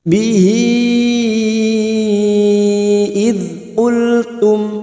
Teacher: Hadhamir laki-laki yang berharokat panjang dan bertemu dengan hamzah, namanya mad silah tawilah. 5 harokat kita panjangkan.